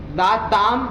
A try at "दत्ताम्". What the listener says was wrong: दा नहीं ना, दो ना।